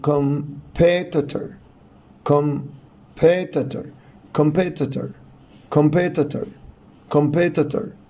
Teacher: طبعا صوت الاو هنا شوا، يعني قصير جدا، والاسترس هنا على المقطع الثاني